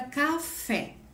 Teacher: Fé é a última sílaba, K é a penúltima, certo? Aonde é a mais forte? Fé. Então, ela é uma oxítona, certo?